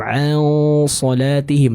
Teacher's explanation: an salatihim ada hukum ikhfa di sana dan bertemu dengan huruf yang tebal. Maka dengungnya juga harus dibaca dengan tebal. Jadi bukan an salatihim ang, tapi ang terbaca dengan tebal ya.